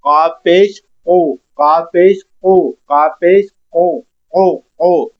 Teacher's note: जुबान तालू से ही लग रही है नरम तालू से। लेकिन हमने होठ अपने गोल किए हैं पेश अदा करने के लिए।